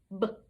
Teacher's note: It is not a continuant because it stops quickly after you make the sound. You cannot drag it out.